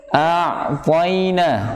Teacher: ain ketika dia sukun, maka dia mempunyai sifat yang harus diperhatikan adalah sifat bainiyahnya. Jadi memanjang, sedikit memanjang. Tapi hati-hati, jangan terburu-buru dilepas.